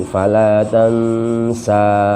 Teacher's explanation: Kalau diwakaf ke berhenti fala tansa. Cukup 2 ketukan saja.